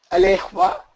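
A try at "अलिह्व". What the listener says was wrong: alihva, alimha. There is no guna here. Guna is only in lower.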